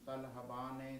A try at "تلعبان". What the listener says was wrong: ہاں جی یہ عین ہے نا.